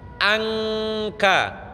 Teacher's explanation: Angkala lebih tipis karena kaf tidak punya sifat tafkhim. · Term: ikhfa